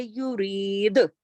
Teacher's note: دال پہ کلکلا کرتے ہوئے رکیں گے، کیونکہ کتبن جدن کا لفظ ہے یہ، یورید ایسے رکیں گے.